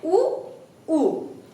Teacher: तो ओष्ठ क्या आ जाते हैं, उ उ। उच्चारण करते समय आपको लग रहा होगा कि होठ बाहर की तरफ आ रहे हैं